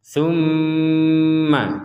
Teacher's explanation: Harus ada dengungan yang letaknya di rongga hidung kita. Summa. Jadi dengung, kemudian diberi jeda waktu minimal ya 2 harokat atau 2 ketukan.